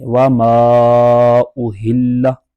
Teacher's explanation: اب یہ وما، میم الف زبر ما، یہ حروف مدہ ہے کہ ہم نے پڑھا الف سے پہلے زبر ہوگی تو الف مدہ ہو جائے گا، تو اب یہ اس کے بعد حمزہ دوسرے کلمے میں آ گیا تو یہاں مد منفصل ہوگا اور اس کو 2 ڈائی الف تک کھینچ کر پڑھیں گے